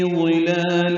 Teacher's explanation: لام پر کھڑا زبر باریک پڑھیں گے، دو حلقات لمبا کریں گے